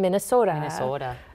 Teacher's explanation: that Minnesota, that tight, long O, is such a signifier of this accent specifically.